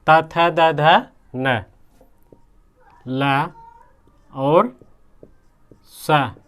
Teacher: त थ द ध न, ल और स, ये क्या है? दंत, दंत से बोले जाते हैं। जैसे ता, जीभ जो हमारी है दांत से स्पर्श करती है तो दंता उसे कहते हैं।